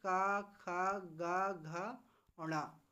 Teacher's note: उच्चारण होता है वो हमारा कहाँ से होता है, कंठ या गले से होता है।